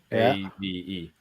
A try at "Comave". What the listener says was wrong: ComAve, yeah, but they pronounce it Avi apparently.